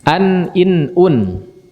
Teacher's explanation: mengucapkan huruf nun sukun secara jelas tanpa disertai dengan ghunnah yang dipanjangkan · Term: izhar